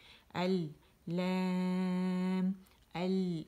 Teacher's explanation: اس میں نا تمام جو لام ہیں وہ باریک ہیں